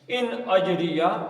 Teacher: اب یہاں سے دیکھ لیتے ہیں جی, ان پھر نون ساکن آ گیا, نون ساکن کے بعد پھر حمزہ ہے تو اس کا اظہار ہوگا